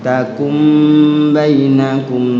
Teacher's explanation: dibacanya mim ya, takum bukan nun, nunnya terbaca mim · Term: iqlab